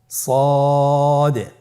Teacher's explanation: সদ হরফের মাখরাজ কোন জায়গা থেকে উচ্চারিত হয় আপনারা স্ক্রিনে দেখতে পাচ্ছেন। জিহ্বার আগা, সামনের নিচের 2 দাঁতের পেট ও আগার সঙ্গে লাগিয়ে উচ্চারিত হয়।